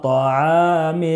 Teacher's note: عین میں بھی الف مدہ ہے، 1 الف کے برابر کھینچ کر پڑھیں گے۔